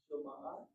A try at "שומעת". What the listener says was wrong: You hit the mem with the patach.